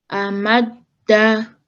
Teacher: you pressed on the dal because it has a shadda.